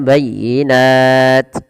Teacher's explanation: dia kita wakafkan dan taknya dimatikan kalau kita berhenti ya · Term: mad arid disukun